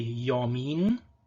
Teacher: this is a glide, this is a palatal approximant